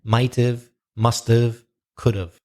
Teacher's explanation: So when we speak, the H sound, the have, the h kind of disappears.